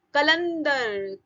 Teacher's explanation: तो ला के बाद आधे ना की आवाज आई